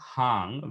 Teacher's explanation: the word for pillow in Dzongkha is hang, where the H is followed by a nasalized vowel